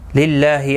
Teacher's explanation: للہ اللہ کا لام زیر کی وجہ سے باریک پڑھا جائے گا، اس کے اوپر کھڑی زبر بھی ہے، ایک الف کی مقدار کے برابر کھینچ کر پڑھیں گے۔